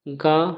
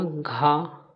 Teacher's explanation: ग अल्पप्राण में आएगा। घ महाप्राण में आएगा।